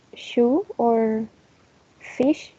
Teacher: the tongue is a little bit back, not in this area, the alveolar ridge, but here. Post-alveolar or hard palate.